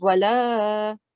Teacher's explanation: if you don't prolong the alif that's after the lam, it completely changes the meaning. Okay, so wala, so prolong it for 2 seconds.